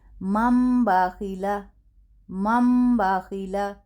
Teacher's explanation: اگر نون ساکن کے بعد با آئے تو پھر اس نون کو میم سے بدل کر ادا کریں گے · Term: اقلاب